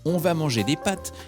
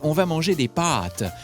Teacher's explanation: On ne dit pas seulement « on va manger des pâtes » avec un A ouvert, mais « on va manger des pâtes » avec un A long.